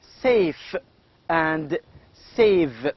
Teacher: We can also see that, we can also feel that the upper part, the upper teeth here, touch the lower lip. And the final sounds in the words like also safe and save. These two sounds are called as labiodental